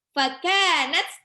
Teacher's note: Fakanat, kafnya itu mat tabi'i 2 harokat. 2 harokat itu enggak panjang-panjang, Bun, cuman 1 ayunan aja.